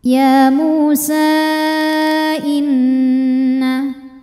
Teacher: Ada hukum wajibul gunnah atau gunnah musyaddadah karena nun bertasydid. Cara bacanya didengungkan. Jadi bunyi n tahan sampai ada suara masuk hidung kurang lebih 2 harokat.